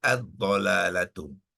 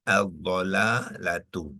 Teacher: bila ada alif lam syamsiah jadi tanwin tu kena gugur dia menjadi damah saja